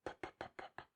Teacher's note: You can't continuously say p. You can just say it in a plosive manner, just 1 second. If you want to continuously say that, you have to produce different instances of p.